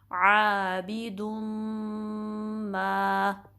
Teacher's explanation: दाल के बाद ऊपर जो तनवीन है उसके बाद मीम आया तो यहाँ इदगाम होगा माल गुन्ना। आबिदुम मा, ठीक है।